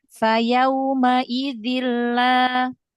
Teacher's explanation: Idgham bila gunnah, tanwin ketemu lamnya langsung masuk.